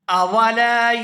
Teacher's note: یہاں لام کو الف مدہ کی وجہ سے کھینچ کر ادا کریں گے